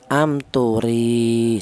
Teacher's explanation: maka huruf ra ini dipanjangkan yaitu 1 alif, panjangnya sama dengan 2 harokat atau sama dengan 2 ketukan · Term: matobi'i